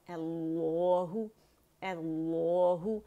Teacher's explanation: اللہ، حمزہ فتح ہے، اللہ، اللہ، حمزہ باریک ہے، حمزۃ الوصل پہ ہم نے فتحہ ڈالی، وہ باریک ہے، اور اسم الجلالہ، لفظ الجلالہ سے پہلے کیونکہ فتح آ گئی تو اس کو موٹا ہی پڑھا جائے گا